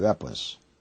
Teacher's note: P가 모음 사이에 오니까 뿌가 되는